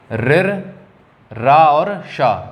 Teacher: मूर्धन्य हैं। ठीक है, ऋर, रा और शा, ये सब कहाँ से बोले जाते हैं? मूर्धा से बोले जाते हैं।